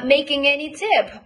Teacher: Now stress the content word. The content word is tip and not any.